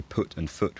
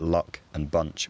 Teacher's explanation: most southerners now say put and foot with one vowel but luck and bunch with another vowel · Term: foot strut split, foot-strut split